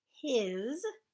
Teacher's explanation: It's a little bit tricky because that S sounds kind of like a Z